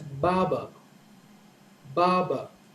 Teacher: So the stress is on the first syllable, ba, and the stress on the second syllable is a little lower.